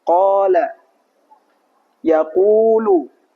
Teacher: qof setelahnya alif untuk memanjangkan huruf qof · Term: huruf mad